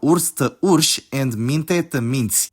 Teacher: the -i suffix causes palatalization to consonants before it